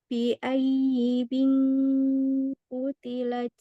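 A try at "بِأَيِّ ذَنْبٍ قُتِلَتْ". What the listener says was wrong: Zamnya ketinggalan.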